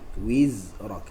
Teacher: huruf zai dia ada satu sifat yang mana sifat dia adalah sifat rakhawah